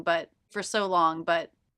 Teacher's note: it was the end of my thought it was a stop T but but I stopped the air for so long but for